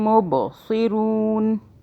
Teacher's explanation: اب اس میم کے اوپر تشدید ہے تو ہم میم کو بھی ہولڈ کریں گے ناک میں، منہ میں 2 سیکنڈ کے لیے رکھیں گے. ب، با قلقلہ کا حرف ہے، اس پہ ہم نے جھٹکے سے پڑھنا ہے